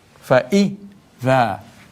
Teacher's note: So it is fa short, fa-i, fa-idha, fa short, i short, dha lengthened